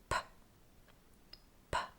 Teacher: For the p, bring your lips together to block the air completely. Then after a small build-up of air, let it explode, but do not use your voice. Like this. P, p. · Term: unvoiced consonants